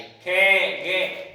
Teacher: के वर्ग का उच्चारण किससे होता है? कंठों से होता है।